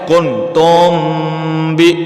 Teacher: میم ساکن ہے، اس کے بعد با آ رہا ہے، حرف با آ رہا ہے تو وہاں پر ہم نے میم پر غنہ کرنا ہے۔ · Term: اخفاء شفوی